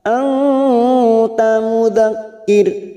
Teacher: Ma anta mudzakir. Anta nun sukun bertemu tak ikhfa hakiki kita samarkan bunyi nun sukun 3 harokat.